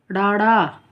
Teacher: ਹੇਠਾਂ ਆਉਂਦੀ ਹੈ। ਜੀਭ ਸਾਡੀ ਜਿਹੜੀ ਤਾਲੂ ਨੂੰ ਨਹੀਂ ਛੂਦੀ ਝਟਕੇ ਦੇ ਨਾਲ ਥੱਲੇ ਆਉਂਦੀ ਹੈ